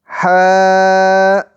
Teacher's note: حلق کے درمیانی حصے سے ح ادا ہوتا ہے